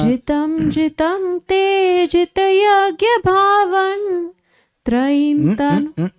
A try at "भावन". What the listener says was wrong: भावन, there is नो हलंत। देखिए नमः भावन, ये काव्य है तो वो एंडिंग मैच करना चाहिए।